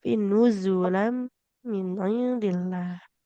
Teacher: zainya tidak boleh jadi jim